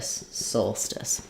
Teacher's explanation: we have first syllable stress Soul um like in the Latin for the sun um um